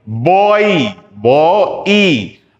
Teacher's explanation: ये ओ से शुरू हुआ और ई पे खत्म हुआ